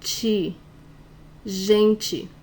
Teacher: This final TE will have different pronunciation in different parts of Brazil. It could be te, it could be ti.